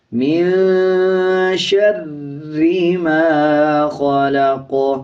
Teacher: آگے دیکھیں میم کے اوپر زبر ہے، جب زبر والے الفاظ کے بعد الف آ رہا ہو تب 1 سیکنڈ لمبا کیا جائے گا۔ قاف پہ جب وقف کریں گے زبر سائلنٹ کریں گے، قاف پہ قلقلہ کیا جائے گا